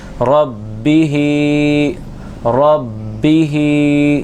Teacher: ہا کو کھینچیں گے کیونکہ اس کے نیچے کھڑی حرکات ہے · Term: کھڑی زیر